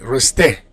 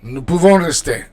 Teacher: for verbs ending in er, like rester, you don't pronounce the R, you just pronounce the E